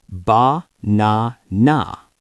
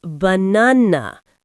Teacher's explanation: But in English, only the middle A is strong. It is the king. The other two A's are weak servants. They become schwas. >> So it is banana.